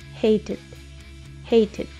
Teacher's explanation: O si quieres puedes pronunciar hated, porque como la t está entre dos vocales, puedes pronunciarlo como una r.